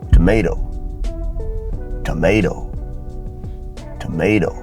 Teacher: you come to the last T it's unstressed it becomes a flap D sound